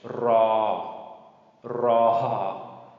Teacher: This is a rolled R. If you are familiar with Spanish, same sound like the rolled R in Spanish.